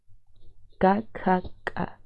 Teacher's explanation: Sí lo estoy realizando con la parte última de mi lengua, con la parte de atrás, vamos a decir. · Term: velar k, velar K